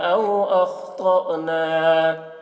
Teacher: یہ حمزہ ساکنہ ہے تو اس کے پڑھنے میں جھٹکا لگے گا